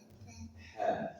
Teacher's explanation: ha pastikan dia keluar dari pangkal tenggorokan H kemudian ya dari tengah lidah ditekan ke langit-langit di atasnya.